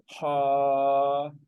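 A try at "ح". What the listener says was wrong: हा। हा में ज्यादा ज्यादा सांस की आवाज भी आ रही है।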